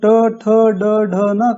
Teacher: जब हम ट, ठ, ड, ढ, न कहते हैं तब जीभ या जबान की नोक दांतों के ऊपर के हिस्से को छूती है या स्पर्श करती है